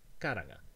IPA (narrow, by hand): kaɾaŋa